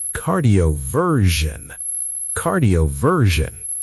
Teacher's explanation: The S makes a ZH sound — like the S in measure.